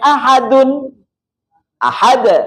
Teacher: itu namanya Qalqalah Kubro bobotnya lebih berat dibanding Qalqalah sugro